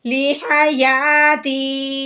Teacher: پہلے ہماری آواز بلندی کی طرف گئی ہے، پھر اس کی ہماری آواز نچائی کی طرف آئی ہے